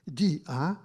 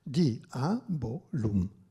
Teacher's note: non fa dittongo ma è iato